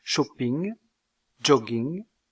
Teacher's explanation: Aux 17 consonnes du français, on peut ajouter la consonne nasale, ng, empruntée à la langue anglaise. On trouve cette consonne à la finale de mots comme shopping, jogging, etc.